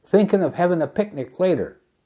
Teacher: elision dropping the G in thinking